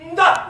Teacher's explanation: se prononce en donnant du bout de la langue au-dessus des dents d'en haut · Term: La consonne D